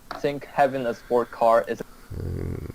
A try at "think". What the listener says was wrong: Think, not sink. So again, he has problems with the TH sound.